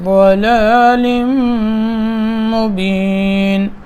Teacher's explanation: حرف ضاد موٹا لفظ ہے، آگے ضلال مبین، لام کو میم میں ادغام کرنا ہے غنے کے ساتھ